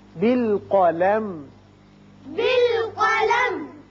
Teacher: جب وقت کریں گے تو میم کو قلم یہ نہیں کرنا، میم کا اظہار ہوگا شفوی